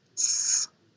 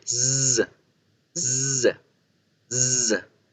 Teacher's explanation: Para la S, para la Z tengo que hacer que vibre.